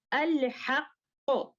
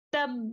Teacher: the way we stop at the qalqala letter that has a shadda is enough to show to the listener that there are two letters. Therefore, we do not have to do nabar in this case.